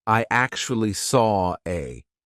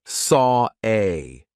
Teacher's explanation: the intrusive R is when we insert an R to link to the next word. Even though there's not an R written there, we just put one in.